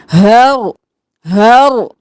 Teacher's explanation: ہا کو نارمل رکھ کے رو کو موٹا کر کے ساکن کرنا ہے